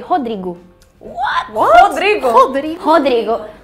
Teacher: The first R is always h sound